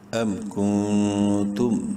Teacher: نون ساکن کے بعد تا حروف حلقی میں سے نہیں ہے، اخفا کریں گے اس نون میں